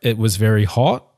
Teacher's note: New Zealand English speakers typically inflect their voices upwards at the end of declarative sentences. Okay, to American and British English speakers, it can sound like Kiwis are asking questions. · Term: rising intonation